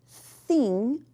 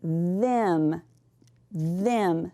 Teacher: There's also another sound that TH can make, and it's th, which is a voiced sound.